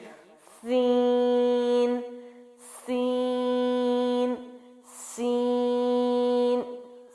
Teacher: سین بھی باریک حرف ہے اور سیٹی کے ساتھ ہے